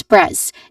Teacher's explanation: It starts with a hissing sound and it ends with a hissing sound. There is a short a vowel sound in the middle as well as consonant cluster right before it.